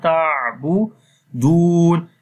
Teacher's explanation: Ta we connect with the ain with the soft sound, ta'budun, and in the ain we make tawassut quality, like not too strong quality, like as you make shidda quality, and not too weak quality, which becomes rakhawa.